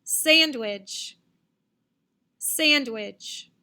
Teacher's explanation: first syllable, sand, is louder, longer, and higher than which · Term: accent